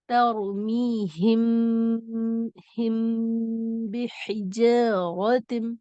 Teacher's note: میم ساکن کو با کے مخرج سے ملا کر پڑھیں اور غنے کے ساتھ پڑھیں، یعنی ناک کو آواز میں روک کر پڑھیں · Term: اخفاء شفوی